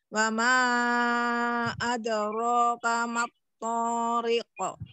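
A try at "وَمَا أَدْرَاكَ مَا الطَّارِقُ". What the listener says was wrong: Ri, toroknya. Jangan imalah. Ri turunkan bibir bawah dan rahang bawah. Wama wanya jelaskan dulu. Rinya jangan dipanjangin. Iya, harokat-harokat fathahnya dijelaskan lagi, dibuka lagi rahangnya. Wa aja jelaskan.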